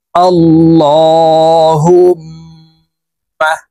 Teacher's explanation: বলতে হবে কারণ আল্লাহ শব্দের আগের হরফে জবর অথবা পেশ হইলে এই লামকে ল অর্থাৎ মোটা করিয়া পড়িতে হয়